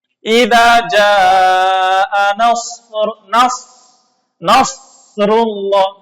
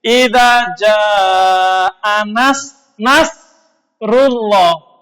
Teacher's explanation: Nasrun dengan nasrun dengan tafkhim dengan tebal. Idza jaa nasrullah dengan shad tebal itu pertolongan artinya. Tapi kalau dengan tarkik dengan tipis idza jaa nasrullah artinya burung elang.